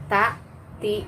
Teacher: ketika diucapkan harus keluar nafas terus keluar angin